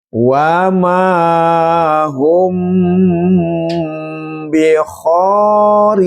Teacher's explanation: ketika ada mim ini mim sukun bertemu dengan ba, maka suara mimnya ini didengungkan dengan halus namanya ikhfa safawi · Maka mimnya ini dibaca dengan dengung, berdengung ya, halus, indah.